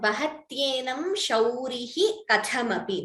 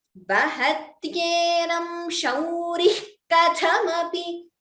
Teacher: Because we are pausing here, we are chanting the Visarga completely.